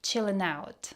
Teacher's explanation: He said that really fast. And ing sounds like in, chilling out.